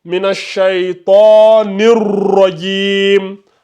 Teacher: Nirra. En plus, le ra, on a dit tout à l'heure qu'il est emphatique. Donc, il faut appuyer sur le ra.